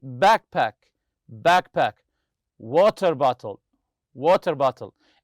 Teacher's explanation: the stress goes on the first part of the compound noun